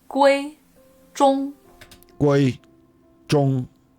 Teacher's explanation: Her name is completely flat. They're all first tone words.